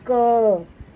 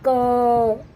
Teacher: इसको बोलते समय देखो लास्ट में अ की आवाज आती है ना ध्वनि आती है क।